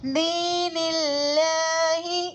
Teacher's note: اللہ کے لام سے پہلے زیر ہے تو اللہ کے لام کو باریک پڑھیں گے. حروف شمسی میں سے الف لام کے بعد لام آ رہا ہے تو الف لام کو نہیں پڑھیں گے. لام کو پہلے والے حرف یعنی نون سے ملا کر پڑھیں گے